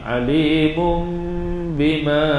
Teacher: Iqlab, dengung dua harakat. Kita dengung pada makhraj mim